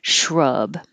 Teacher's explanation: the vowel is oh so keep your tongue pulled back in your mouth a lot